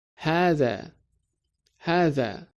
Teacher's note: The vowel sound after ha is longer